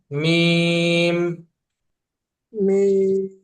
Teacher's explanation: দুই ঠোটের শুকনা জায়গা হইতে হতে উচ্চারণ হয় মিম